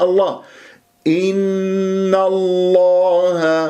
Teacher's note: تكون النون الثانيه مفتوحه قبل الاسم الجلال الله تفخم الله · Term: تفخيم